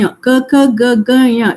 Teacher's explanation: The tongue is touching only the kanta part, nothing else is moving. So without moving anything, you have to say nya, ka, ka, ga, ga, nya.